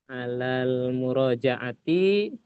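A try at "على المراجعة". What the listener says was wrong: murajaati. T-nya jangan dipanjang, Pak.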